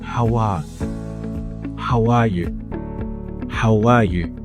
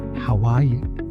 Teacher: I'm putting the sound w in between how and are in order to maintain the rhythm. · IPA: /w/